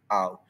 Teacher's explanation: Gabungan vokal A U yang disebut sebagai satu bunyi luncuran dalam satu suku kata diucapkan sebagai satu unit bunyi berterusan dan bukan dua vokal yang berpisah iaitu au. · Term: diftong